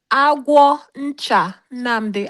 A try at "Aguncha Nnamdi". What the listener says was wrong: It's not agwo. It's not. There's no O in it. There's no agwo. Aguncha Nnamdi Lutana. It's not agwo. There's no O in it.